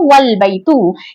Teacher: उससे पहले वाव आने की वजह से ये हमजा यहाँ से गिर गया · हमजा ने वाव को लाम से मिला दिया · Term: हमजातुल वस्ल